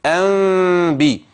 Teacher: اردت ان اخفيها لابد ان يكون هناك خفه في الانطباق يعني ما بيكونش انطباق الشفتين انطباقا تاما